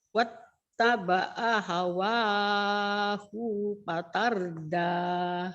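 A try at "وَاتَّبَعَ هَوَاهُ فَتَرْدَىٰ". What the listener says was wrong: Hunya pendek. Hunya pendek. Wattaba'a hawahu fa. Hufa. Hufa. Tada hunya, kalau Ibu tadi kan hunya bacanya panjang. Pendek ya Bu. Panjang pendek ya Bu.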